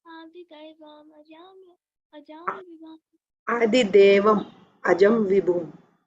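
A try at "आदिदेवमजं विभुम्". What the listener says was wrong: Adi Devam Ajam Vibhum. Not Daivam, Devam.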